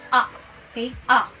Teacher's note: It is an open front vowel sound.